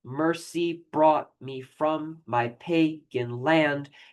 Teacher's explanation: Um and so uh uh there are five there are 10 syllables total. The 10 syllables are divided by five pairs of a stressed and an unstressed syllable.